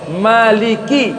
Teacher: মিমে এক আলিফ পরিমাণ তারপর লিকি আলাদা আলাদাভাবে